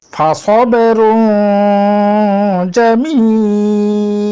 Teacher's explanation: আমাদেরকে নাকের ভিতর লুকিয়ে গুন্না করে পড়তে হবে